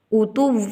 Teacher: اتوٌ، 2 زیر کے بعد میم آ گیا، یہاں پر ادغام مع الغنہ ہوگا، یعنی کہ ایک لفظ کو دوسرے لفظ میں ملا کر ناک میں آواز کو چھپا کر ایک الف کے برابر گنہ ادا ہوگا